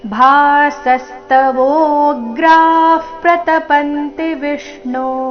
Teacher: ಭಾ ಮಹಾಪ್ರಾಣ ದೀರ್ಘ ಮುಂದಿನ ಸ ಮೇಲೆ ಆಘಾತ